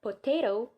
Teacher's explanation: It is the sound in which there is a constriction between the lower lip and the upper lip. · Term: bilabial sound